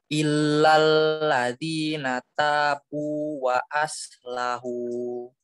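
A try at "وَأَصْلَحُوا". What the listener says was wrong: Iya, wa aslahu. Shotnya dibagusin lagi ya. Shotnya ditebalkan karena shot huruf isti'lah tebal.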